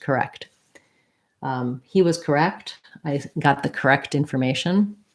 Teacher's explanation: correct correct yeah i think i pretty much say that t it's pretty hard to do a stop t after a k so i think they both get released